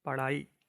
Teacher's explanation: जीभ की नोक झटके से नीचे गिरती है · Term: उत्क्षिप्त ध्वनि